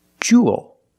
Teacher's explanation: It's pronounced the same as cool and pool. You have the long ooh sound plus the dark L.